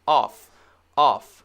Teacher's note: very clearly the f sound no voice